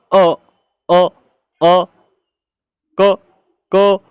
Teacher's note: ये कंठ से बोले जाएंगे। इनकी आवाज़ कंठ से आएगी।